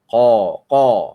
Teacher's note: Kalau qaf berbaris atas, ya tebal dia.